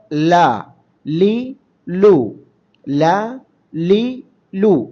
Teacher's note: നാവിന്റെ തലയുടെ രണ്ട് അരിക് അതിൻറെ നേരെ എതിർമേലെ അണ്ണാക്കുമായി ചേർത്തുകൊണ്ട് ഉച്ചരിക്കുക